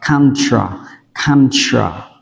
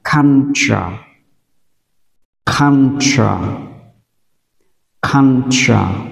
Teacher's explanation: u đọc là á và u tiếp theo chúng ta đọc là ơ và t u chúng ta đọc là tra.